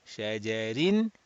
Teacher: If we are continuing, kasratain will make this ra muraqqaq, flat. If we are stopping, ra becomes sakin, preceded by a fatha, and ra will be read mufakham, rounded.